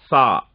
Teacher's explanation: சான்னு சொல்லும் போது நுனி நாக்கு மேல இருக்க 2 பல்லுல படணும். சான்னு சொல்லும் போது நுனி நாக்கு மேல இருக்க 2 பல்லுல பட்டா எப்படி உச்சரிப்போமோ அது மாதிரி உச்சரிக்கணும், சா.